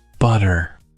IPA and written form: ˈbʌɾər (butter)